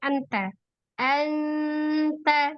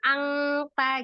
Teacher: Nah, tapi kalau di huruf ta itu mendekati nunnya izhar, bunyi N gitu ya. Tapi dia disertai dengan gunnah. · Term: ikhfa